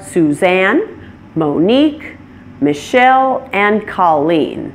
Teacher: it stresses the second syllable since it's a name that came from the French language